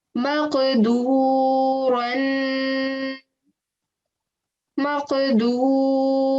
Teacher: you're giving a jerking sound on the qaf because qaf is one of your jerking letters, or you can say one of your qalqala letters.